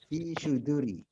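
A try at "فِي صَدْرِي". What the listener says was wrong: Kalau suduri pakai wawu, Pak. Suduri ini tidak ada wawu. Dibacanya bukan suduri tapi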